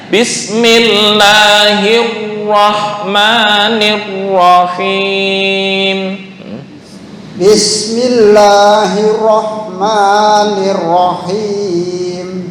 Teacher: Tasdidnya dipasang sambil tafkhim. Tafkhim tahu ya, tebal.